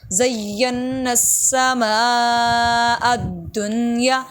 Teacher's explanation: الدنیا میم پہ بڑی مد ہے، اس کو اچھا خاصا لمبا کریں گے